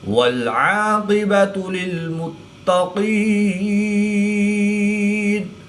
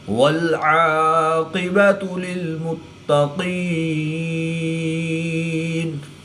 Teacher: قاف حرف مستعلیہ میں سے ہے تو اس کو پر یعنی موٹا پڑھیں گے